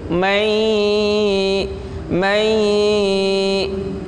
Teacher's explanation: Idgham bi gunnah. Suara konsentrasinya di hidung. Mai. Panjangnya kurang lebih sekitar 2 harokat.